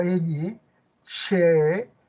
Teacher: toda esta parte central de la lengua se sube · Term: consonantes palatales